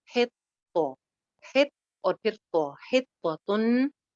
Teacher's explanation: तो के ऊपर शद है तो यानी कि तो दो दफा हो जाएगी, तो मोटा भी है भरा हुआ भी है।